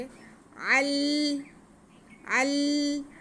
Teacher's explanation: लाम मुशद्दद है तो ऐन का ज़बर हम लाम के साथ मिला के पढ़ लेंगे